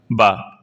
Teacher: ओट अल्पप्राण घोष वर्ण का उदाहरण है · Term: ओष्ठ अल्पप्राण घोष वर्ण